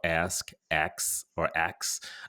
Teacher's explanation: the pronunciation of ask as ax is a result of a linguistic phenomenon called metathesis. Metathesis is when sounds or syllables within a word are transposed or switched around.